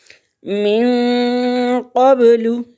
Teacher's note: من قبل، من نون ساکن ہے اور آگے جو آنے والا لفظ ہے حروف اخفا میں سے ہے قاف، قاف کو موٹا پڑھیں گے۔ زبان کا پچھلا حصہ اٹھتا ہے اور تالو کے نرم حصے کو چھوتا ہے تو قاف ادا ہوتا ہے۔ من قبل، با حروف قلقلہ ہے، اس کو تھوڑا سا ہلائیں گے، حرارت دیں گے۔